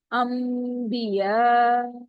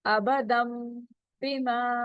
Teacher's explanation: نون ساکنہ کے بعد اگر با آئے تو اس کی آواز چینج ہو جاتی ہے میم میں